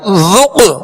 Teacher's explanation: ذال کو نرمی سے پڑھنا ہے، ذال میں سیٹی اور سختی کی آواز پیدا نہ ہو